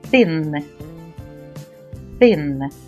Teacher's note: буква сполученняці H позначає два звуки глухий п для його вимови кінчик язика стає між зубами і вимовляємо звук т